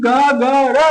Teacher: जैसे ही ग ग र बोलोगे तो आपकी स्वर तंत्रिका जंकृत करेगी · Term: घोष